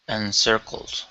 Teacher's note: First up, we have the word encircles. So that first C, instead of saying enzer, it's an unvoiced S